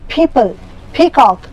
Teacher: it is a plosive sound, it is plosive, it should break from the lips